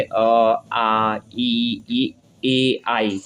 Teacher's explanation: ओंठों की स्थिति के आधार पर स्वरों का वर्गीकरण क्या होता है, तो आवर्तमुखी, आवर्तमुखी यानी वे स्वर होते हैं जिनके उच्चारण करते समय ओंठ वृत्तमुखी या गोलाकार नहीं होते हैं